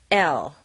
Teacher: the tip of the tongue is securely touching the roof of the mouth behind the teeth but the sides of the tongue are dropped down intense this is where L is different from n with n